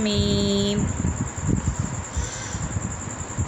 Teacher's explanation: آگے ہے میم، ان کو حروف غنہ بھی کہا جاتا ہے، جو نون اور میم ہیں ان کو حروف غنہ بھی کہتے ہیں، اور جو میم ہے نا دونوں ہونٹوں کی بیرونی تری کے ملنے سے ادا ہوتا ہے